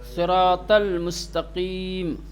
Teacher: पुरहज्म करनी पड़ेगी, मोटी मुफक्खम इसको पढ़ा जाएगा, और सीन में जो सीटी है उसको थोड़ी कम कर दी जाएगी।